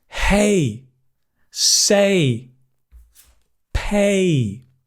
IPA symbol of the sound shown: eɪ